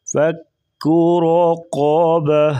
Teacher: را اور قاف کو پر پڑھیں گے